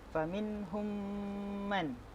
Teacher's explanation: Faminhum, kemudian humman, faminhum man, mim mati berjumpa dengan mim, idgham syafawi atau idgham mithlain, dibaca dengung sepanjang 2 harakat